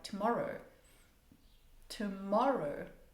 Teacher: So, there's a rise and fall, rise and fall to the voice.